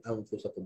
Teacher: Makhraj dia pangkal lidah tekan ke langit-langit atas dan kita keluarkan u.